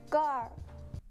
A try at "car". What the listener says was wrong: Oh, she's got her tongue in the L position. But there it sounds like there's no R, right? So instead of er, it's an er sound. She's saying gal, gal, gal, which sounds a lot like call, call, gal, call.